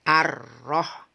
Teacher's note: Jadi sifat takrir yang berada pada roh ini cukup satu getaran saja. Ar-Roh, ketika sudah ada getarannya, satu getaran, tidak boleh banyak, kemudian langsung masuk ke huruf hijaiyah berikutnya.